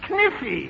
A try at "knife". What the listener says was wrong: No, the word is knife. K is the silent letter. K is always silent in front of N.